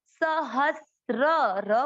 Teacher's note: यह 'त्रा' नहीं है, इसका उच्चारण आधा 'सा' और पूरा 'रा' होता है